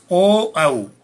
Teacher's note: इन दोनों स्वरे कंठ और ओष्ठ दोनों के अपेक्षित सहयोग से बोले जाने के कारण इनको कंठोष्ट कहते हैं